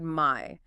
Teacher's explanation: You start with that broader a sound and then move towards the e sound. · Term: dip thongs